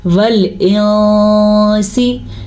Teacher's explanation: اگر آپ تجوید کے ساتھ پڑھ رہے ہیں، قرآن کو درست پڑھ رہے ہیں، تو آپ نے پڑھنا ہے ول انسی. نون کو پورا بھی نہیں ادا کرنا اور نون کو شارٹ بھی نہیں ادا کرنا، غنے کے ساتھ ادا کرنا ہے. اس قاعدے کو اخفاء کا قاعدہ کہتے ہیں.